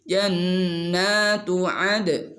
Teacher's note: kalau dal ketika sukun maka qalqalah ini mantul